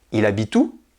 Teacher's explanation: La question est prononcée avec une intonation montante.